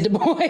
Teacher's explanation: The accent is on the second syllable.